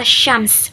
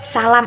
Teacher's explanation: SH atau shin itu lebih tebal kayak di kata syams, matahari, sedangkan S itu lebih tipis seperti di kata salam